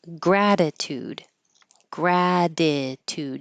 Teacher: the first T will change to a d